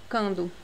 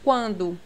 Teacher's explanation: Não pronuncia cando, pronuncia quando. Você escuta esse U.